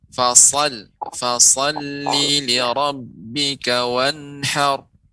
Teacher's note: Untuk shad lebih banyak juga panjang huruf desisnya, aliran udaranya.